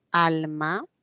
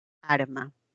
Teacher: Ahí hay función distintiva de alveolares, porque un sonido L que es alveolar, la voy a cambiar por una R.